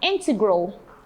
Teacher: integral having the stress on the first syllable